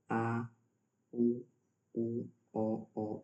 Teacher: तीसरा है पच स्वर, जीभ के पिछले हिस्से से उच्चारित किए जाते हैं